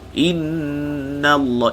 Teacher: jangan baca inna, panjangkan wajibul ghunnah.